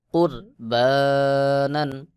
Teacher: র সাকিনের আগের হরফে পেশ রয়েছে র কে মোটা করে উচ্চারণ করতে